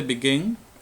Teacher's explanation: Entonces, en este caso, como el verbo begin o el verbo refer, en este caso me tengo que fijar en la sílaba tónica, la sílaba con mayor fuerza de voz, the stressed syllable. En el caso de begin, la sílaba tónica es gin.